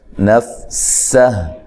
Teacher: سین کو باریک سیٹی سے ادا کرنا ہے۔ نفسہ وقف کی صورت میں ہا ساکن ہو جائے گی، ٹھیک ہے، سین کو باریک سیٹی سے ادا کرنا ہے، فا کو ہلانا نہیں ہے۔